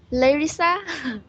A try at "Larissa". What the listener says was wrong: Yeah, very good.